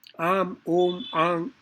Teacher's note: a nasal vowel A is different from a nasal consonant coming after a vowel as in Om, Am, Ang